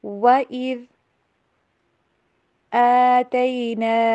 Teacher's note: ذال کی آواز بھی کلیئر کیجیے، زا نہیں پڑھیے اس کو